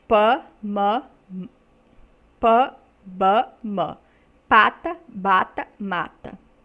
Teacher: o primeiro segmento dessas palavras Pan pó vamos pata bata mata repara que todos são produzidos com os nossos lábios né o fechamento e o estreitamento do espaço entre os nossos lábios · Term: bilabial